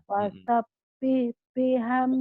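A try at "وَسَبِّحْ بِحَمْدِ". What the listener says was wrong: Bukan pasabih, wa. Ini wau. Wa Bu ya. Wasabbih.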